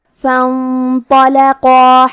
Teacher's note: نون ساکن ہے اور اس کے بعد حرف تو ہے، تو حروف الاخفاء میں سے ہے، اور اخفاء کا معنی ہے چھپا دینا · کلمت فانطلقا میں الف ہے لیکن یہ حمزہ وصل ہے، لہذا ہم حمزہ کو ظاہر نہیں کریں گے. فا کے بعد حرف نون کو پڑھیں گے.